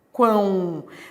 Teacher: Olha que legal, esse O tem som de U, ele é semivogal. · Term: tritongo